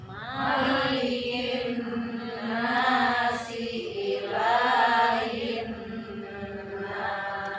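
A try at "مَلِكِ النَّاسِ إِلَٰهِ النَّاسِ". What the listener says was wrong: Ya, nunnya jangan lupa diguna. Malikin nasi ilahin nas. Tadi malikin nas, nasnya ikut apa gunah ya. Kemudian ilah lahnya apa? Matubi'i ya, sama an-nasi gunah. Alif lam apa bu? Alif lam syamsiyah ya.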